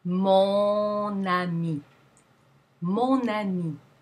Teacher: make a diesel such as a modifier that precedes a noun the nasal vowel retains its nasal quality and the nasal consonant is pronounced in a liaison situation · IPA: /mɔ̃-na-mi/